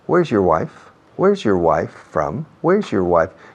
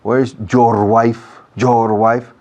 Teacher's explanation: esa partícula your, adjetivo posesivo, no tiene peso fonético en la frase o acentual.